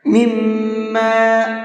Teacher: ہا بنا کر کے پڑھتے ہیں۔ وَالْحِكْمَةَ وَعَلَّمَهُ مِمَّا يَشَاءُ، مِمَّا، میم کے اوپر تشدید ہے تو یہاں پر غنہ کر کے پڑھیں گے